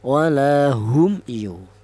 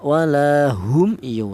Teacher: Mim matinya dibaca jelas. Kalau artinya syafawi itu di mana huruf mim ini keluarnya huruf berasal dari bibir. Itu artinya syafawi itu bibir. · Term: izhar syafawi